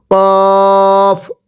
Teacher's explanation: এরপরে কফ। কফটা উচ্চারণের সময় গলার মধ্যে হালকা একটু ধাক্কা হবে